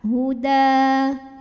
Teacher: Huda kalau berhenti di sini hukumnya adalah madhobi'i karena ada alif didahului fathah. Alifnya alif bengkok, alif maksurah.